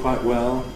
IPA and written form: ˈkwaɪʔ ˈwel (quite well)